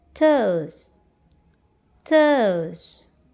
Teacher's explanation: O is longer in duration while U is shorter.